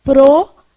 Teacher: faz aí p p p p você vai fechar o r esse R aqui ó ele é um R vibrante ele vai vibrar a sua língua então você faz pro Vê se sua língua não dá uma